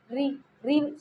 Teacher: जब हम ऋ को उच्चारित करते हैं तो कहीं ना कहीं र की आवाज आती है